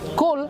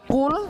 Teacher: kalau kaf mengeluarkan desis angin, qaf tidak mengeluarkan desis angin. Qaf dia isti'la atau tebal, kemudian kaf dia tipis.